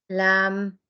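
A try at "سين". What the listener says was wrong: No. No, it's not a lam. How is it lam? Yes, seen.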